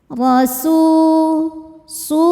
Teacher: huruf ro dibaca secara tafkhim karena berharakat fathah cara bacanya ditebalkan · Mad Thobi'i doohiri sebab ada wau sukun sebelumnya berharakat damah cara bacanya dipanjangkan dua harakat